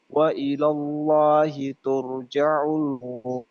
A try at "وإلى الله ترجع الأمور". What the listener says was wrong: Diperbaiki pengucapan huruf jim ya. Wa ilallahi turja'ul umur.